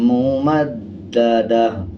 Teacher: گول تا پہ جب وقف کرتے ہیں ہا بن جاتا ہے، دونوں زیر کو سائلنٹ کر دیں گے اور وقف کرتے ہوئے آدھے ہا کی آواز آئے گی